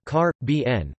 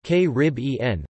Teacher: (karr-ə-BEE-ən), with the primary stress on the third syllable, and (kə-RIB-ee-ən), with the stress on the second